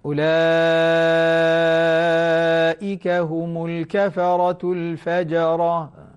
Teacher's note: أعيد آخر آية مع المد المشبع ست حركات